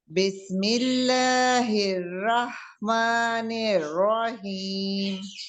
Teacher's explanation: जो पहली हि रहमा की रा है उसको भी मोटा रखे